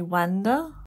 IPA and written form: ˈwændə (W A N D E R)